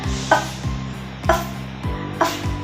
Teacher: bunyi F adalah bunyi gesekan tak bersuara. Mengapa? Saat kita membunyikan F, pertama kita menggesek F.